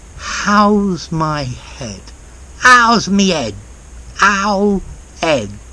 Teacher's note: You need to drop your H's